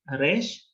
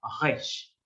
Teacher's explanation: Van a escuchar que los israelíes lo van a pronunciar en la garganta. Ellos van a decir no Resh, sino Resh.